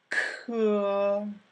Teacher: K, on the other hand, has more aspiration than in English.